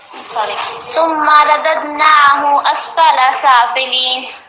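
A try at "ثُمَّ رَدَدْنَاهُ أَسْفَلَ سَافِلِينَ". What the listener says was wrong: ابھی بھی اسفلا کے فا کو تھوڑا سا کھینچا تھا آپ نے. اسفلا نہیں، اسفل سافلین.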